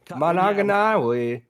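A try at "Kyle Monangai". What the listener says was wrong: You added like 3 extra syllables, bro.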